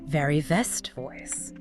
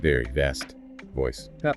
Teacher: For the V sound, V, your top teeth need to lightly touch your bottom lip. Then you push air through, making a buzzing sound,